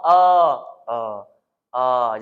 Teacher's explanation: Hamzah keluar Dekat mana batang tekak paling bawah a a a jangan tebalkan dia a a Ain pula keluar